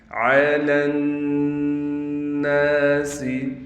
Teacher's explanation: عین کو ہم ڈائریکٹ اس نون سے ملا دیں گے، غنہ کے ساتھ اس یا کو بھی نہیں پڑھیں گے، یہ الف بھی نہیں پڑھا جائے گا۔